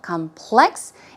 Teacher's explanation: the stress goes on the second syllable